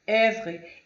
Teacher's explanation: E para finalizar, nosso último slide aqui, a letra O e E é um som aberto, como se fosse E